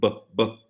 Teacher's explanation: labial, where the lips are closed